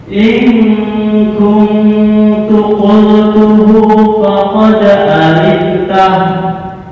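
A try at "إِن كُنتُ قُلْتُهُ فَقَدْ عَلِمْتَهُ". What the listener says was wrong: Kurang, sepertiga harokat. Alimtahu.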